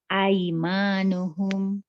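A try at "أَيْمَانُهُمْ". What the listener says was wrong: Ya, maknya tadi pendek. Auma malakat aimanuhum.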